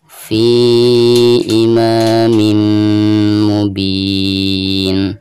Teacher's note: Di sini huruf mim ya, dan termasuk idgham bigunah. Maka ketika kita membaca tanwin yang ada di bawah mim tersebut itu harus dimasukkan ke mim yang ada di depannya sekaligus digunakan ya.